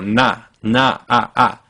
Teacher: If you stay on that first vowel, you don't move on to the uh in now, but instead you stay put. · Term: Mandarin's a